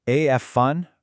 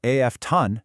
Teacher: we learned that the t is traditionally silent